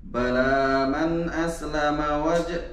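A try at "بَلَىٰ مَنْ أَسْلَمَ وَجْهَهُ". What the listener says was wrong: Asl. Jangan keluarkan qalah.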